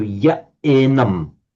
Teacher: All that happens there is the visarga drops, so ya enam.